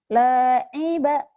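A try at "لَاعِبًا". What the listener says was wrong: nggak ada yang panjang. Nggak ada yang panjang.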